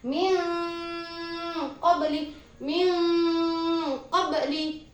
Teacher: Jadi suara nun sukun ketika bertemu salah satu huruf ikhfa yang berupa qaf di sini dibaca samar. Min qabli. Tidak dibaca min qabli.